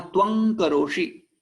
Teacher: इस अनुस्वार को हम क्या बना देंगे क वर्ग का लास्ट वाला वर्ण वहा रख देंगे जैसे क ख ग घंग ग तो यहां त्वं करोशी ऐसा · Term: अनुनासिक